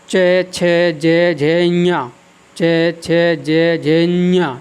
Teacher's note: जब मैं इन्या बोलता हूँ तो हमारी ध्वनि कुछ नाक से निकल जाती है